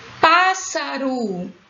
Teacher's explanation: Então, a classificação da sílaba tônica dessa palavra é proparoxítona. Proparoxítona, porque a sílaba tônica é a antepenúltima.